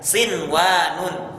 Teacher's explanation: melainkan dalam kata ini kita tidak baca seperti Idam diunah melainkan kita baca izhar jelas sinwanun ya tanpa dimasukkan dan tanpa dengung